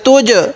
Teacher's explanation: এখানে একটু ধাক্কা দিয়ে পড়ব, কারণ এই জিমটা হলো কলকলার হরফ